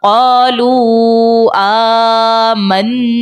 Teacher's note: مد منفصل کا قاعدہ ہوگا 3 سے 5 سیکنڈ کی مقدار اس کو ہم کھینچ کر ادا کریں گے